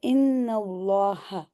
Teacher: اسم جلالہ کو تو ہم نے ہیوی کرنا ہے، ٹھیک ہے، تفخیم کے ساتھ پڑھنا ہے